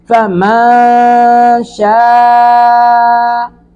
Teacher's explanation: ساکن کے بعد شین ہے، شین حروف اخفا میں سے ہے، اخفا ناک میں آواز کو چھپانا ہے نون کی۔